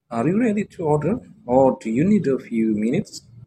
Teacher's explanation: notice the rising intonation on order and falling intonation on minutes